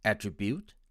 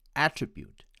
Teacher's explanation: with the stress on the first syllable